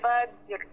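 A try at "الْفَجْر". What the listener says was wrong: Ha, cepat sikitlah. Kalau lama ya bunyi fajr. Ha, tak selesai. Fajr. Cepat. Fajr.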